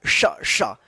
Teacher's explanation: देखिए इसका जो उच्चारण होता है ना वो जो है ना, और ये 2 मूर्धन्य श, इन दोनों श का जो उच्चारण होता है ना सेम होता है। ठीक है, जीभ जो है ना तालु में जाकर सटता है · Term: तालव्य श